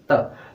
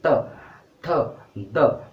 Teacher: हमारी जो आपकी जो जीभ है ना, वो दांतों से टच हो रही है